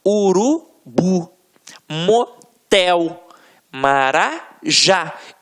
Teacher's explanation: você vai perceber que realmente a pronúncia da última sílaba ficará mais forte. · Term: oxítona